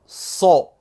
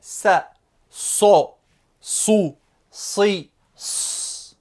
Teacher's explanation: Le sod, cette lettre-là, est le S emphatique, c'est-à-dire le S prononcé de façon grave. Il s'écrit avec une grosse boucle, comme vous le voyez ici, et il se prononcera ainsi.